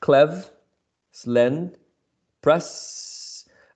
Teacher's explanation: the first syllable is closed clev slend press all of them end in a consonant sound